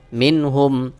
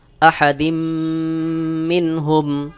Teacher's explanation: আহাদিম মিম নুন জের মিন হা মিম পেশ হুম মিনহুম এখানে নুন সাকিনের পরে হা ইজহারের হরফ কোন গুন্না ছাড়া স্পষ্ট করে পড়তে হবে